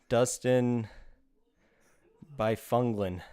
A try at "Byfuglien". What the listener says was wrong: That's former Chicago Blackhawk and Winnipeg Jet Dustin Byfuglien. The G is silent. Byfuglien.